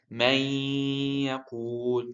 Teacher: you do not hear any noon sound. You just hear a nasal sound.